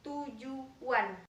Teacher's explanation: Tetapi pada kata tujuan, bunyi T itu akibat dari akan diucapkannya bunyi U yang merupakan vokal bunda. Maka bunyi T disertai dengan proses pembulatan bibir sehingga bunyi T terdengar sebagai bunyi tu. Jadi kata tujuan dilafalkan menjadi tujuan. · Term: Labialisasi